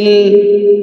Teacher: এখানে 3 আলিফ টেনে শিনকে সাকিন করে ফেলবো।